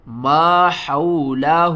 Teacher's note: حا کو آپ نے حلق کے درمیان والے حصے سے ادا کرنا ہے اور آواز جو ہے نا وہ باریک ہوگی